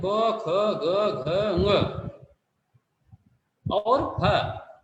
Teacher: क ख ग घ और ह इनका उच्चारण स्थान जो होता है वह हमारे कंठ से होता है